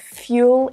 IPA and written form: ˈfjuː.əl (fuel)